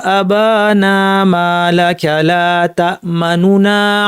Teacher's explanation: একটু দ্রুত চলে গেলাম আর কন্ঠস্বর একটু নিচু করে ফেলেছি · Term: রওম